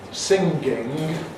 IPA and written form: ˈsɪŋgɪŋg (singing)